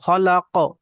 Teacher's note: আর কফ ত বা জিম দাল হরফে কলকলা 5টি অক্ষরের মধ্যে থেকে কোনো একটি অক্ষরের উপরে যখন সাকিন হয় তখন একটু ঝাটকার সঙ্গে কলকলা করে পড়তে হয়। তো তো খালাক, এরকম কলকলা হবে।